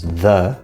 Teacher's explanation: in fact write a becomes a schwa sound Z becomes the which is th plus the schwa sound